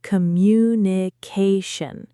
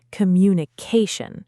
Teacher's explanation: It has five syllables. Communication. The main stress is on the ca sound.